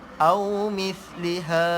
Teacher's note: Mith tu dia kena keluarkan sedikit lidah.